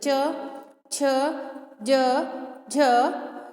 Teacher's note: उसी प्रकार जब हम च वर्ग का उच्चारण करेंगे तो जो तालु होता है, यानी कि हमारे मुंह में जो ऊपर वाला हिस्सा होता है, हमारी जिह्वा वहाँ पर स्पर्श करती है